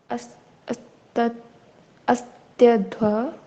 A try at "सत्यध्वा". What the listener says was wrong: Actually जो ये होता है ना, ये वाला स्वर जो होता है, ये आ का उच्चारण होता है, लेकिन इसका गुंग होता है, प्लुप्त होता है। तो आप इसको असत्य की जगह आप सत्यध्वा पढ़ सकते हो डायरेक्टली।